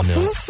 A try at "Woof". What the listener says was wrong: No, it's not Foof. It's Woof. It's with a V. It's with a V. A V. You got to really, have your lips quiver at the end there.